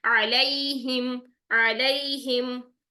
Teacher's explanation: अब यहाँ पर आ अगर आपका निकल आया है वस्त हल्क से, तो आइन को जबर के साथ अदा करना मुश्किल नहीं, इसको लंबा नहीं करना, 1 काउंट ही रखना है सिर्फ। ठीक है, यहाँ पे 1 काउंट अदा करना है, अलैहिम, अलैहिम।